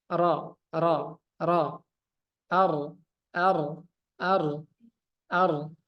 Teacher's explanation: huruf ro itu jadi napasnya itu suaranya itu ee bergetar ro ro ro ar ar ar ar ada napas yang keluar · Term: inhiraf